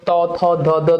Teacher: একদম দেখো দাঁতের গোড়া থেকে উচ্চারণ হয়, এই জন্য এগুলোকে বলে দন্ত ধ্বনি।